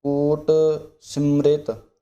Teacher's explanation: ਇਸ ਪੰਕਤੀ ਦੇ ਅੰਦਰ ਵੀ ਜਿਹੜਾ ਕੋਟ ਸਿਮ੍ਰਿਤ ਪਾਠ ਟਿੱਪੀ ਛਪੀ ਹੋਣ ਕਰਕੇ ਕੱਸ ਕੇ ਪਾਠ ਬੋਲਣਾ। ਕੋਟ ਸਿਮ੍ਰਿਤ, ਸਿਮ ਪਾਠ ਕੱਸ ਕੇ ਮ੍ਰਿਤ ਪੋਲਾ।